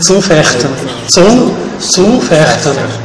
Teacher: Quen pode decir U, zu, non é U, é un U. U moi tenso, moi pechado, moi tenso. E longo.